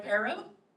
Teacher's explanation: Sing the R in Pero. Got the alveolar trill.